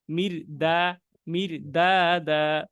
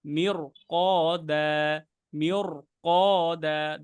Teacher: এখানে যদি সদের বদলে যদি অন্য কফ দেই, মুস্তালিয়ার হরফ, মিওর ক দা, মিওর ক দা, দেখেন মোটা কিন্তু হয়ে যাচ্ছে, কারণ কফ মুস্তালিয়ার হরফ